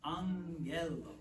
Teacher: if you have two gammas next to each other, there's kind of an N that sneaks in